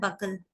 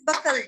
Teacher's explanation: between ka and la, we are finding this schwa sound